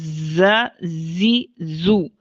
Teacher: زا کی آواز بلند اور باریک ہوتی ہے، صفت جہر کی وجہ سے آواز کے اندر بلندی پائی جاتی ہے · زا یہ مجہورہ رخوہ ہے، سانس جاری نہیں ہوتی، آواز جاری ہوتی ہے۔